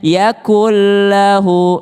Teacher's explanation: Nun ketemu dengan lam, melebur ke lamnya.